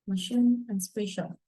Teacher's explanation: The manner of articulation is fricative, of course, when the two vocal organs come close enough together. Place of the articulation is palatals, formed by touching the side of the tongue to the roof of the mouth.